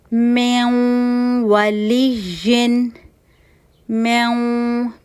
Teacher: थोड़ी आवाज मुंह से और ज्यादा नाक से निकालनी है और हमने टू काउंट का यहां पर गुना करना है। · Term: इदगाम नाकिस